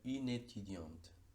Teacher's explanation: Lo mismo sucede en une étudiante, donde tenemos una E caduca al final de en el artículo une, pero en este caso esa E caduca va a ser totalmente muda, y lo que vamos a ligar es la N de une con la primera E de étudiante. El resultado sería une étudiante. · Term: encadenamiento